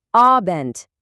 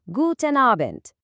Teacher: Kelimenin sonundaki D harfini sanki T'ymiş gibi okumaya çalışın. Yani abent gibi.